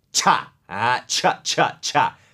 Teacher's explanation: มันจะมีเสียงTก่อนSครับเพราะว่าจริงๆแล้วCHก็คือTตามด้วยS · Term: เสียงควบกล้ำ